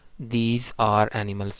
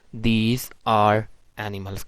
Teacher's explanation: अगर एक सेंटेंस है दीज आर एनिमल्स, तो इधर जो है अब पॉसिबिलिटी है कि ब्रिटिश इंग्लिश स्पीकर जो है वो आर को प्रोनाउंस करेंगे